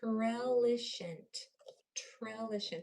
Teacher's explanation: It's the easiest way to pronounce that TR the way it was intended is to really spit out the sound of that T. Use a lot of air when you say trellishant.